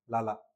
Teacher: ल बोलने से हवा बगल से निकलती है। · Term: पार्श्विक व्यंजन